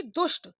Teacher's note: श के बाद त थ आए दंत वर्ण आए तो यह ट ठ मूर्धन्य में परिवर्तित हो जाते हैं